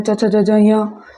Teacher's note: ये उच्चारण स्थान कौन सा अपना है, तालु है। उसके बाद में वर्णों की ध्वनि कौन सी है, तालवी है। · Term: तालु वर्ग